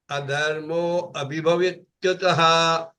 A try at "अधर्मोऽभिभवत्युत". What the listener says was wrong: Don't say abhibhav. When you are chanting together, you say adharmo bibhavatyuta. Adharmo bibhavatyuta. No tah. Only adharmo bibhavatyuta. No tah.